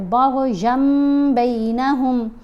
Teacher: نون کی آواز ختم ہوگی، ین کی بجائے یم پڑھا جا رہا ہے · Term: قلب